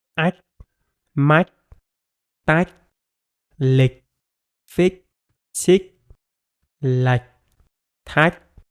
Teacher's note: So you have to shorten the vowel that is in front of the ch sound